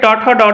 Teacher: ट वर्ग के जितने भी वर्ण है इन सभी वर्णों को क्या कहा जाता है मूर्धन्य वर्ण कहा जाता है या मुर्धन्य ध्वनि कहा जाता है है ना और त थ